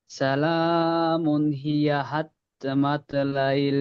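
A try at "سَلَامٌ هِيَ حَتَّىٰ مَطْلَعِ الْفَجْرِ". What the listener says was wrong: হাত্তা টানুন, হাত্তা তার উপরে খাড়া জবর আছে, টানুন।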